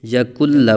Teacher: یہاں غنہ نہیں کریں گے بلکہ یکل لا پڑھیں گے اس کو · نون لام پیش کل، لام زبر لا، یا کل لا، یہاں نون ساکن کے بعد حروف یرملون میں سے لام آنے کی وجہ سے ادغام بلا غنہ، یعنی بغیر غنہ کے ادغام ہوگا ، یکن لا نہیں پڑھیں گے، یکن لا، یہاں غنہ نہیں